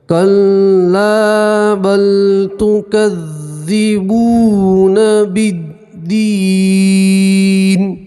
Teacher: واو مدہ اصلی ہم ایک الف کے برابر کھینچیں گے